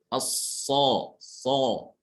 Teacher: sempitnya jarak antara langit mulut dengan lidah ini yang menyebabkan suara shad itu terdengar tebal. So ya. So dengan menaikkan pangkal ini. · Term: huruf shad